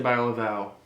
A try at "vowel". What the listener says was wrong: You said buy a vowel. I'd like to buy you a consonant. It's an L at the end of vowel.